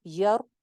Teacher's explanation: रॉ यहाँ पे मोटी हो जाएगी क्योंकि पीछे जबर थी। हमने पढ़ा रॉ साकिन के कवायद में कि रॉ अगर साकिन होती है तो पीछे वाली हरकत चेक कर लेते हैं, पीछे जबर हो या पेश हो तो रॉ मोटी कर लेते हैं।